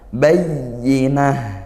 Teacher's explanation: Ta marbutah di akhir dibaca bunyi ha